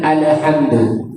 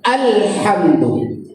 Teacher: Jadi jangan ada qalqalah pada huruf lam yang mati itu.